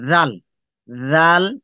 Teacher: দেখেন জিবার আগা উপরে দাঁতের আগাতে জাল